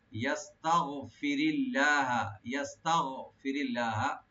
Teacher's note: ইয়া open রাখবেন, সিন পাতলা হবে, আর তা ওপেন রাখবেন, গাইনটাকে রাইট দিবেন। ইয়াস্তাগ মানে গলা শুরু থেকে, ফিরি, ফিরি ইয়াস্তাগফিরি এখানে লফজ জালালের সাথে মিলাই পড়বো।